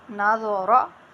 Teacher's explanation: را بھی پر ہے کیونکہ را کے اوپر زبر ہے، ضا بھی پر ہے